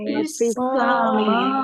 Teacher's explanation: Fis samawati, alif lam samsiyah karena tidak dibaca. Langsung masuk ke huruf berikutnya yaitu sin, ditandai sinnya ada tasdidnya. Sinnya dibaca double.